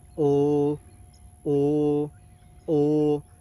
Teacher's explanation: El segundo sonido de esta vocal, recuerden que es larga con tono bajo. Duplicar el sonido de la vocal.